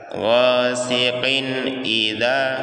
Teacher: Min syarri itu ikhfa, kita dengungkan. Kemudian ghasiqin idza, yaitu izhar, huruf tanwinnya dikasih jelas, qin, ghasiqin idza, bukan ghasiqin idza ya, jadi dikasih jelas cara bacanya, izhar, ghasiqin idza.